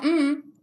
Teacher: Et la bouche, elle est fermée, c'est un son complètement nasal